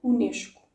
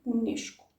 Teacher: the S before a consonant becomes a sh sound. UNESCO.